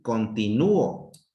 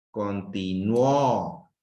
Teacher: Donde está la mayor intensidad es en la U.